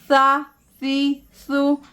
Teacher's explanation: सामने के दो दांतों के दरमियान टिप ऑफ द टंग यानी ज़ुबान की नोक को थोड़ा बाहर लाके सा अदा की जाती है। जैसे सा ज़बर सा, सा ज़ेर सी, सा पेश सु, सा सी सु।